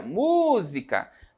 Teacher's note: Demora mais a sair, então a sílaba tônica aí é o mu